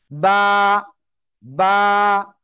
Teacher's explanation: দুই ঠোঁটের ভিজা অংশ থেকে বা অক্ষরটা উচ্চারণ হবে। বা, বা, একালিপ টেনে পড়তে হবে।